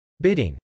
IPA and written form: bˈɪdɪŋ (bidding)